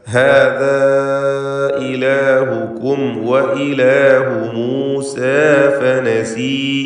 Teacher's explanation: ഹാദാ എന്നതിലെ അലിഫിനെ മദ്ദുൽ മുൻഫസിൽ നൽകി ദീർഘിപ്പിക്കുക. 4-5 ഹറക്കത്തിൻ്റെ അളവിൽ ദീർഘം നൽകുക.